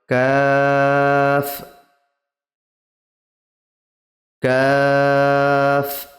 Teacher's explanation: জিভের গোড়া হতে একটু আগের দিকে আগে বাড়িয়ে ও তার বরাবর বরাবর উপরের তালুর সাথে লাগিয়ে উচ্চারিত হয় কাফ কাফ এটারও লাস্টে বাতাস বের হবে কাফ জিম তিন আলিফ